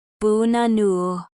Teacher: The stress is on the middle syllable, so the others are reduced.